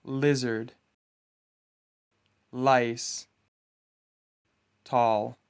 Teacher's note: You pronounce this sound by putting the tip of your tongue on your alveolar ridge and making a sound with your throat. If you release your tongue and let it go back to the floor of your mouth, you should make a sound similar to la.